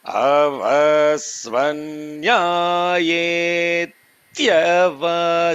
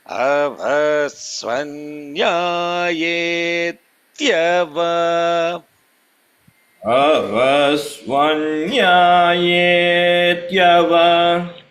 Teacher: So long vowel followed by a compounded consonant. The first consonant is more held. Avasvanyayetyava.